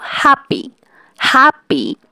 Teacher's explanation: তো প্রথম সিলেবাল হ্যাপে জোর পড়ে, যেমন হ্যাপি, এবং দ্বিতীয় সিলেবাল পি, এটা হচ্ছে আনস্ট্রেসড, কারণ এখানে জোর পড়ে না বা কম পড়ে